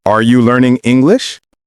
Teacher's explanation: Voice goes up at the end. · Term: rising intonation